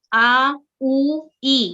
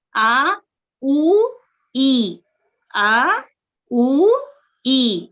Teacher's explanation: یعنی 2 کاؤنٹ کر کے ہم اسے پڑھتے ہیں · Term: الجوف